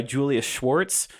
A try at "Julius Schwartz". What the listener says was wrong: It sounded like Julia Schwartz the way you...